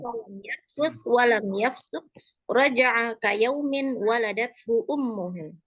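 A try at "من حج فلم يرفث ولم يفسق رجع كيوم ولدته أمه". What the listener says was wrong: Ahsanti jazakallah khairan.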